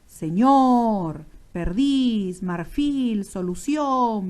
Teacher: observas que la intensidad está en la última sílaba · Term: aguda